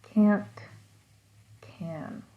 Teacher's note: both of these words, can't and can, are both pronounced with the full vowel of a.